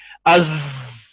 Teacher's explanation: जा में रिखावत है आवाज जारी होगी